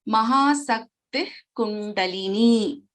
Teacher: we don't pronounce the complete visarga over here. Mahasakti Kundalini. So half visarga, and we chant, we pronounce the letter ka. Mahasakti Kundalini is the pronunciation in this case. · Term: Jihwa Muliyaha